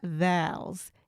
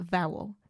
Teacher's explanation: We hold that O sound for a little bit longer.